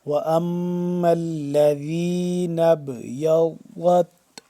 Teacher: ضاد کو جو مخرج ہے وہ زبان کی بائیں کروٹ کو اوپر والی داڑھوں کے ساتھ جب ٹچ کریں گے تو صحیح طریقے سے ادا ہوگا ضاد